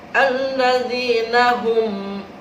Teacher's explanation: Jadi langsung bibir kita tertutup. Alladzina hum, tidak boleh dengung, tidak boleh samar. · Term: ijhar syafawi